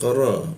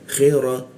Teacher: ro menggunakan ujung lidah ditempelkan di bawah hidung